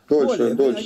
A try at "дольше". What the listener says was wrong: Неправильно ударение делаете. Дольше.